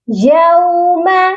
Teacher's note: آواز جو ہے آپ کی او میں نہیں جانی چاہیے، آپ کی آواز کا ساؤنڈ یو میں کنورٹ ہونا چاہیے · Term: واو لین